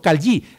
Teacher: Lo que pasa es que esta palatal lateral, callí, para los que somos yeístas es difícil